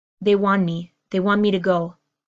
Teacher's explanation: Because I have the N and the M, which are formed in the same place of my mouth, my want me, I want me, you want me, they want me. This strong T disappears because the N and the M are so close in my pronunciation, the location where I form the N and the M in my mouth.